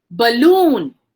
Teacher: balloon loon has the stress on it